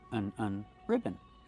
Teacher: the second syllable is not stressed. It's relaxed and closed.